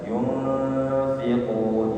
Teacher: ikhfanya diarahkan ke makhraj huruf fa, perut di bawah dengan gigi seri atas